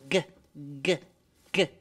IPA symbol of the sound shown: g